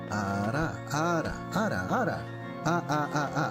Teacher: You have like a purely consonant flipped R sound